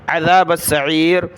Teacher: با کو آگے سین کے ساتھ ملایا